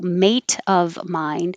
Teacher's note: in American English, now that T will change to a D. So mate of mine now sounds like maid of mine, which sounds a lot like maid of.